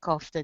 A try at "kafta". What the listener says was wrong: It's pronounced kafta kebab. Kafta, not kofta. It's kafta. Kafta. Kafta. That's how you pronounce it. Kafta kebab. Kafta.